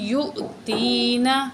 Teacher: فعسا ربی، را زبر با، رب با زیر یا مد بی، ربی ان یؤتینا، یہ حمزہ ہے، حمزہ میں ہم جھٹکا لگائیں گے